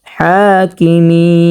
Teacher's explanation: স্পষ্টভাবে দুই নাম্বার মাখরাজ উচ্চারণ করতে হবে বিহমিল হাকিমি খারা জবর হাকিমি এখানে তিন আলিফ পরিমাণটা নিয়ে পড়তে হবে